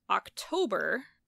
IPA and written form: ˌɑkˈto.bɹ̩ (October)